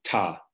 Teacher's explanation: So something like ta with a long lag voiceless stop